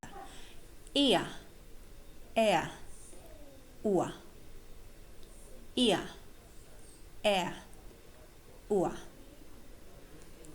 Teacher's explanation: remember it's a vowel plus the schwa, that's the symbol, is the diphthong ia, ia.